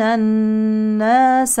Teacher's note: نون مشدده حكمها وجوب الغنه